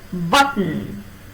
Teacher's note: For t you make a contact with the alveolum, and for n is also an alveolar sound. But when you pronounce t and n, the contact is retained.